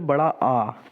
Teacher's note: बड़ा आ आप बोलेंगे तो पूरा मुंह आपका खुला रहेगा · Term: विवृत